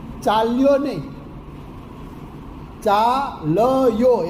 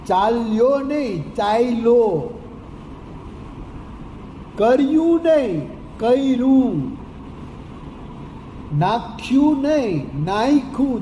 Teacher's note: ય આગળ આવી જાય છે અને મધ્યનો જે અડધો અક્ષર છે એ છેલ્લે જતો રહે છે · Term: પુરસરણ